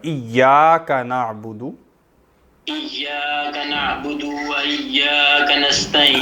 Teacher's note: نہیں الف ہے نا، یا کے بعد الف ہے تو ایک الف کے برابر